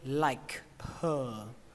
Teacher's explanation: Chỗ thứ hai các bạn có thể nối đó là chữ like với her thành liker.